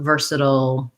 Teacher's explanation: We have first syllable stress.